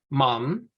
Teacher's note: this shortened mem is just a m sound but half as short